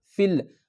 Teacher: یہ لکھنے میں تو فی ہے لیکن اب ہم یا کو نہیں پڑھیں گے، فا کو ڈائریکٹ اس لام سے ملائیں گے